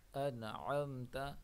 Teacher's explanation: نون ساکن کے بعد حرف عین ہے جو اظہار کا ہے